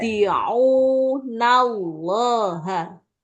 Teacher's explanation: Vokal U-nya panjang dulu, Bu. Jangan di-un, tapi ya.